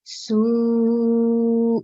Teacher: And on this one, this is the letter sin, so it'll be su because it is the huruful mad, so it needs to be prolonged for up to 4 to 6 seconds